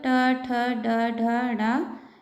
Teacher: इसे मूर्धा से बोला जाता है और इसे मूर्धन्य व्यंजन भी कहते हैं।